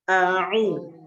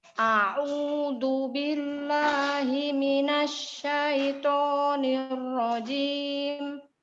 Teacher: Tapi harus a'u. Hamzanya dulu dari tenggorokan bagian bawah, habis itu ain dari tenggorokan bagian tengah.